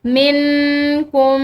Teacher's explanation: نون ساکن اس کے بعد کاف یہ حروف اخفا میں سے ایک حرف ہے تو یہاں پر بھی ہم اخفا کریں گے